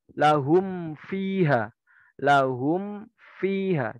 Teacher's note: Berhati-hatilah apabila huruf mim sukun bertemu dengan huruf wawu dan fa karena dekat dan samanya makhraj. Mim kan makhrajnya di bibir, fa dan wawu juga makhrajnya di bibir. Jadi apabila mim sukun bertemu dengan wawu atau fa, maka harus hati-hati, harus dijelaskan.